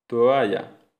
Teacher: El paso del sonido vocálico O al sonido A produce un movimiento de los labios que si se realiza de forma relajada, con mucha relajación articulatoria, puede provocar que los labios se junten añadiendo el sonido bilabial oclusivo sonoro B.